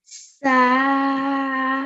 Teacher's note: So we prolong it for 2 seconds. It's an alif madya.